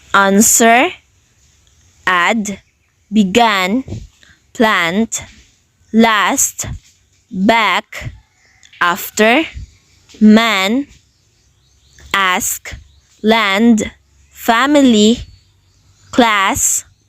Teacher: short a1 is pronounced in the front lower part of the mouth